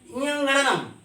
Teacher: इनका उच्चारण नाक से होने के कारण इन्हें नासिका वर्ण भी कहते हैं